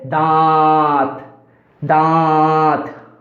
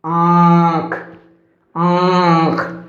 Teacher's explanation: जब हम अनुनासिक का उच्चारण करते हैं तो हवा नाक और मुंह दोनों से बाहर आती है